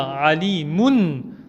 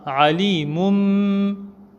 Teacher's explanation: On va changer le tanwin par la lettre mim, c'est-à-dire au lieu de dire alimun, on dira alimum en faisant le runna.